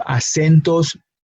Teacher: The emphasis is on that sen syllable.